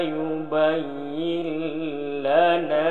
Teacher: nun mati bertemu dengan lam, ini hukumnya idgham bila gunah, memasukkan suara nun mati ataupun tanwin dengan tidak berdengung